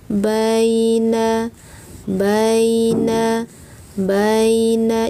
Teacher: tidak ditarik-tarik, dan tidak dibaca lama. Bacalah dengan lembut dan perlahan. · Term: harfulin